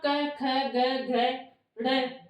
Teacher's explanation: ये ध्वनि आपके कंठों से आ रही है, इसलिए इनको कंठे वर्ण कहा जाता है।